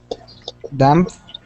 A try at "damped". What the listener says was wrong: Okay, give me a good T sound. Damped.